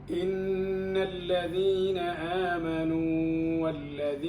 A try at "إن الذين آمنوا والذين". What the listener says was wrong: لا تمد مد زائد، هذا طبيعي. إن الذين آمنوا والذين هادوا.